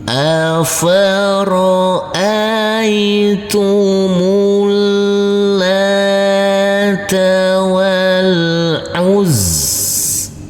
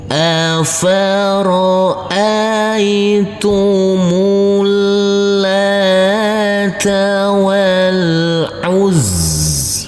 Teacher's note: Huruf zain kita tekan dan kita tahan saja dengan 2 harokat. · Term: tasydid